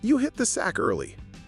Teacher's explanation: So if you say you hit the sack early with rising intonation it sounds like a question. But if you say you hit the sack early with falling intonation it sounds like a fact